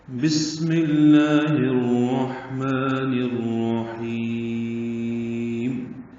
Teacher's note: بی معروف طریقے سے ادا کرتے ہوئے سین ساکن سے ملائیں گے۔ با کا مخرج دونوں ہونٹوں یعنی شفتین کا تر حصہ۔ سین اور میم بھی مکسور ہے، سین ساکن ہے، اس کو صفیر یعنی سیٹی جیسی پتلی آواز سے ادا کریں گے اور اس پر ہمس ہوگا، یعنی پڑھتے ہوئے سانس کی آواز جاری رہے گی۔